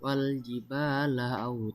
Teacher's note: Ada huruf ba bertemu dengan alif. Jadi cara membacanya dipanjangkan selama dua harakat. · Dan terakhir terdapat mad iwat, yaitu karena dal berharakat fathah, tanwin dan diwakafkan. Cara membacanya tanwin dihilangkan dan panjangnya dua harakat.